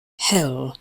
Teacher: To make it, start with a little preparatory lip rounding and slide to the foot vowel. Please note that L does not have an effect on the vowel sound. There is no L colouring, so keep them the same. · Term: goat diphthong